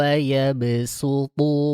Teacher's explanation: maka dia dibacakannya dengan huruf sin, bukan dengan huruf shad